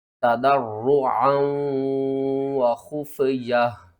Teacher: عین کو آپ نے حلق کے درمیان والے حصے سے ادا کرنا ہے اور آگے ادغام مال غنہ کریں گے۔